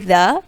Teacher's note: ذا کی ادائیگی ہم نرمی سے کریں گے، اس میں ہم سیٹی کی آواز نہیں نکالتے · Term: ذال